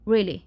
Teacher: really, with falling intonation, the speaker may express confirmation, emphasis, or skepticism.